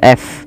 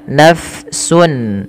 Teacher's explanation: Pada lafal nafsun huruf fa harus dialirkan nafasnya. Nah, mengalirnya nafas di dalam di dalam kajian ilmu tajwid yaitu kita kenal dengan istilah sifatnya namanya hams, yaitu mengalirnya nafas.